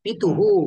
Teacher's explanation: विसर्गाचं उच्चारण ह सारखे करायचे आहे आणि त्याच्या अगोदर जो स्वर येईल त्याला घेऊन ह चं उच्चारण होईल